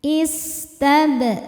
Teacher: Sinnya berdesis ya. Salah satu sifat dari sin adalah sofir, ada desis seperti ular.